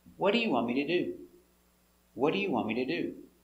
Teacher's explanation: The intonation goes down at the end of an information question. An information question is one that starts with a question word like what or where.